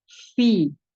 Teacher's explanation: dialirkan karena huruf fa ini mempunyai sifat hamas dan rohah, mengalir suara dan mengalir udara.